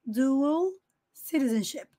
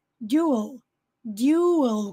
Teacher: Dual, com som de U no inglês americano. E no inglês britânico, dual, dual, como se fosse you